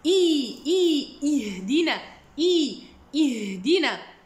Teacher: le ha, il y a une rakhawa, il y a un hams. C'est le même ton de prononciation que le sin. Donc, je dois bien laisser couler l'air et le son de la lettre.